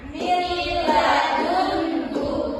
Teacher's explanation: jangan ditahan bacanya, cukup dimasukkan saja ke huruf lamnya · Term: idgham bilaguna